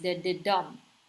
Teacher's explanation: that has three syllables the first two are unaccented and the third syllable is accented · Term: anapest